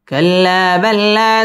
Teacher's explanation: কাল্লাম তাসদীদ ওয়ালা হরফ, লা মদ্দে তাবাই এক আলিফ টেনে পড়তে হবে। কাল্লা বাল্লা, লা মদ্দে তাবাই এক আলিফ টেনে পড়তে হবে।